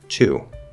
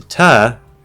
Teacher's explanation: it's stressed it's just fully enunciated two i want to now if i reduce it to ta that u is sort of collapsing under the weight of the gravity and changing into uh okay so it's even shorter it's even quieter now that's fine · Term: reductions